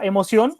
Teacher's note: en emoción, la sílaba tónica es Sion. Sion, la última.